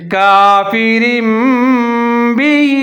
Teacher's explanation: رہا ہے کیونکہ تنوین کے بعد با ساکن ہے، تو یہاں ہم اقلاب کریں گے، آواز کو میم کے ساتھ تبدیل کر دیں گے